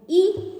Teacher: ई वर्ण का उच्चारण स्थान है हमारा तालु, कि तालु के माध्यम से हम ई वर्ण को बोल सकते हैं, तो ये तालु के माध्यम से होगा।